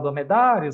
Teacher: o crescente é do fraco para o forte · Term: ditongo crescente